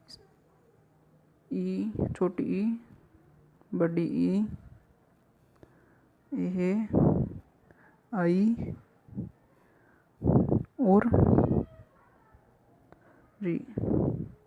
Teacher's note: अग्र स्वर जो होते हैं दोस्तों, वो जीभ की आगे वाले भाग से उच्चारित होते हैं